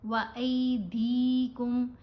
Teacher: یہ لین حرف ہے، زبر الف کے اوپر زبر، ساتھ یا ساکن، تو آواز بنے گی ای